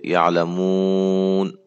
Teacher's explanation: جب حرف مدہ کے بعد والے حرف پر وقف کرنا ہو تو وقف کی صورت میں اسے ساکن کر کے حرف مدہ پر 3 یا 4 الف کے برابر مد کر سکتے ہیں